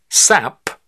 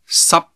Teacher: But P, T, and K are different. They're not fully pronounced, the escape of air being cut off.